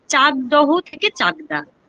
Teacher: অঘোষ থেকে স্বঘোষিতে পরিণত হলো, মানে চাকদহ থেকে চাকদা হয়ে গেল, তার মানে এটা ঘোষ ধ্বনিতে পরিণত হয়ে গেল, তার মানে এটাকে বলা হবে যে ঘোষী ভবন।